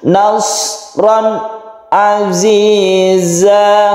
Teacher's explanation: ketika kita baca nasron Aziza langsung ke Ain ya tapi ingat suara dari nun mati itu tidak terlalu ditekan ya Karena dia mempunyai sifat tawassut atau tengah-tengah